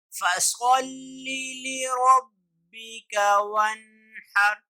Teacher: فَصَلِّ میں صاد ہے، اس کو ذرا موٹا کر کے پڑھیں گے. اور اسی طرح ون ہر کو اکثر لوگ ون ہر پڑھتے ہیں، تو یہ ہا نہیں ہے بلکہ یہ ہا ہے.